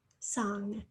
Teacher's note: Some people have a hard time hearing the the N and then the G. That N gets swallowed up a little.